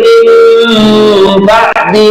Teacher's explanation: nah ini nun mati berjumlah dengan ba, namanya adalah iqlab, mendengung